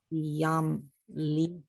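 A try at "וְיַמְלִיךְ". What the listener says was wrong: V'yamlich. You have to hear the chaf.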